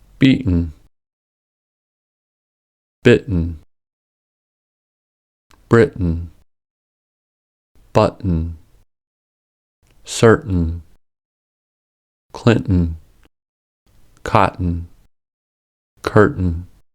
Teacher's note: When T is expressed in a glottal stop, there is no sound for T. Before syllabic N.